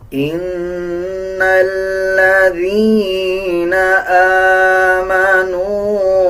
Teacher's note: نون کے اوپر شد ہے، غنہ کیا جائے گا